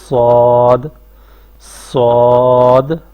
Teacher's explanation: زبان کا جو اگلا حصہ ہے وہ بھی اٹھے گا اور پیچھے والا حصہ بھی زبان کا اٹھے گا۔ صاد، صاد، آپ ادا کریں، صاد، اور درمیان سے زبان نیچے رہے گی ایسے، صاد، صاد۔